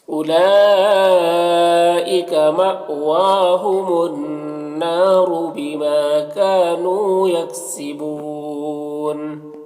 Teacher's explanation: بیما میں الف مدہ ہے، کاف میں الف مدہ ہے، نون میں واو مدہ ہے، تینوں کو 1 الف کے برابر کھینچیں گے۔ یکسبون میں وقف کریں گے تو مد عارض وقفی ہوگا، تو اس طرح سے پڑھیں گے۔